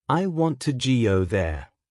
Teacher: Notice how want and go receive more stress.